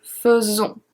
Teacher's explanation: AI before the S is pronounced as a E, faisons. And it's going to stay the same way in the imparfait.